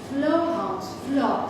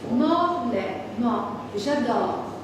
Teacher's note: c'est un O ouvert. Morlaix, mort, j'adore, O ouvert.